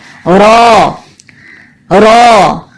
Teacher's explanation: जबान का आखिरी हिस्सा भी ऊपर उठ जाता है और आवाज मोटी सुनाई देती है।